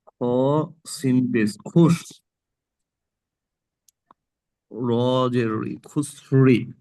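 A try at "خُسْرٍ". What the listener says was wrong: খ সিন র পেশ খুসরো, নিচে দুজের তানবিনটাকেও সাকিন পড়তে হবে, যেহেতু এখানে পড়া শেষ হয়ে যাচ্ছে। এটাকেও দুজের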